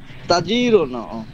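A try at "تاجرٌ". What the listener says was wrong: তায়ের মধ্যে টান হবে, তায়ের মধ্যে, তা আলিফ জবর তা, তায়ের মধ্যে টান। তা তা তায়ে টান দিন ভাই।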